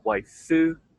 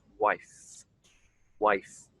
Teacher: So let's not add any extra syllable after the end of the F sound, the end of the word. It's a one syllable word in this case, wife, wife.